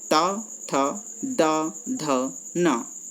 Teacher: हमारा जीभ का जो अग्रभाग है वो दांतों से टकराता है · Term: दंत्य